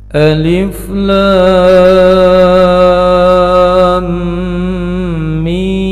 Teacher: Alifnya dibaca pendek, kemudian lamnya panjang, mimnya juga panjang. Ada tanda panjang lebih dari dua harokat.